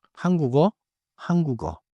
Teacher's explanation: 받침 기역 소리를 끊지 말고 이어 주세요